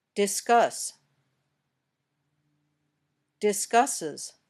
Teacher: The ending sounds like uz.